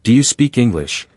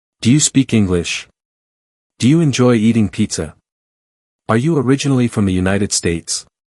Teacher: Can you hear how my voice lifts slightly at the end? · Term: rising pitch